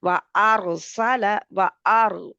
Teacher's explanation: रा मोटा, और इसमें थोड़ी सी तकरार भी है